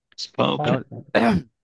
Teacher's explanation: যখন স সাউন্ড থাকবে, তখন এই স সাউন্ডের সময় কখনো এটা আর ফ বলা যাবে না, এটাকে প বলতে হবে।